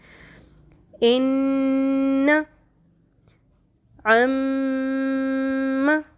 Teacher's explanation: جب نون کے اوپر اور میم کے اوپر ڈبلیو والا سائن آ جائے گا، تشدید آ جائے گی، تو ہم نے اس نون اور اس میم کی آواز کو ناک میں ٹھہرانا ہے۔ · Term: غنہ